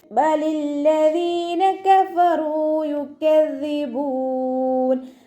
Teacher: ദാലിന് ശേഷം യാ മദ് വന്നു, 2 കൗണ്ട് നീട്ടിക്കൊടുക്കുക.